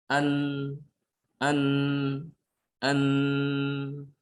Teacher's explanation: Menutup, tapi rongga hidungnya terbuka ya. Rongga hidung terbuka sehingga suaranya seperti sedikit mengalir. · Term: sifat bainiyah